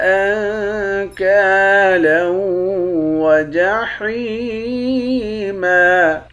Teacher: اس والے نون پر اخفا کریں گے، لام کو واو کے ساتھ ملا کر ادغام مع الغنہ یعنی غنہ کے ساتھ پڑھیں گے